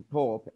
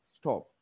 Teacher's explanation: टॉप में puff aspiration ज्यादा है और स्टॉप में कम है.